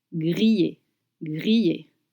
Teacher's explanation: Grillé with double L, you want to make sure to make the sound Y, like in you or in yes.